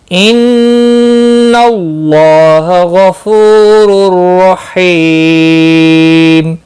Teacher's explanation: فو واو مدہ ہے، ایک الف کے برابر کھینچ کر پڑھیں گے۔ را دو پیش کی وجہ سے پر پڑھا جائے گا۔